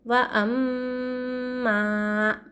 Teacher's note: میم پر تشدید رہا تو کیا کرنا چاہیے؟ غنہ کرنا چاہیے تھوڑی دیر.